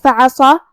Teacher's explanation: صاد حروف التفخیم میں سے ہے، لہذا ہمیں صاد کو بھاری آواز میں پڑھنا ہے